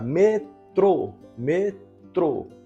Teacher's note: A sílaba tônica é o trô. É a última sílaba, né?